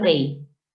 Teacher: la fuerza de voz recae en la vocal débil, la I